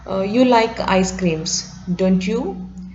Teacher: he posed this kind of question, and most probably it is in falling tone